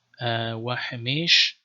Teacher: So like here we see wa hamesh, so there's a chatef patach, though it was probably just pronounced like shwa in Aramaic